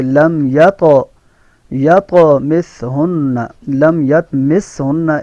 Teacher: سا کو سین نہیں پڑھنا, سیٹی کی آواز نہیں ہے اس میں. نون میں غنہ ہے.